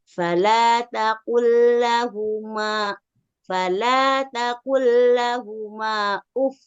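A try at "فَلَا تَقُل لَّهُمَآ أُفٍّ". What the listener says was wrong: Maknya coba dipanjangkan Bu, afwan. Ini alisnya ketinggalan ya.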